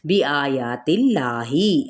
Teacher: اللہ کا جو لام ہے وہ کھڑے زبر کے ساتھ ادا ہوگا لیکن باریک پڑھا جائے گا کیونکہ پیچھے تا پہ زیر ہے · میم ساکن کے بعد جب با آ جاتا ہے تو یہاں پہ اخفائے شفوی کا قاعدہ ہوتا ہے، یعنی ہم بھی یہاں پہ میم کی آواز کو چھپائیں گے اور با کو سختی سے ادا کرتے ہوئے بِآيَاتِ اللَّهِ، آ اور یا پہ کیا ہے مد اصلی بالالف کا قائم مقام، ایک الف کے برابر کھینچیں گے۔